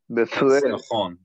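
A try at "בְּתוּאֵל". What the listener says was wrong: Nachon, correct.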